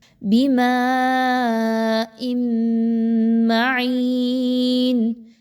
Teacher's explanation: یأتیکم، حمزہ پر جزم کا نشان ہے تو اس وجہ سے اس کو جھٹکا دے کر پڑھا جا رہا ہے۔ بماء معین، حمزہ کے نیچے 2 زیر کی تنوین ہے اور اس کے بعد میم ہے تو اس وجہ سے یہاں پہ غنہ کیا جا رہا ہے، میم مشدد کا، یعنی نون ساکن اور تنوین کے بعد میم آ گئی تو ادغام مع الغنہ۔